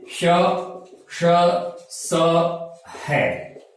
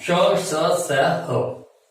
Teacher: हमारे मुख विवर से जो प्राण वायु है बहुत ज्यादा घर्षित होकर निकलती है, घर्षण से निकलती है। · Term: ऊष्म वर्ण